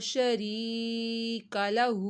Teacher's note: یا ساکن سے پہلے زیر آ رہی تھی تو یا مدہ ہوا، ایک الف کے برابر کھینچا